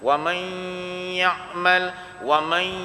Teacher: Idgham kita akan masuk jadi idgham bila gunah apabila kita kata wa may ya'mal, tak masuk hidung, bukan idgham ma'al gunah. Syarat dia idgham ma'al gunah mesti masuk hidung. Wa may, dia rasa batang hidung kita ni.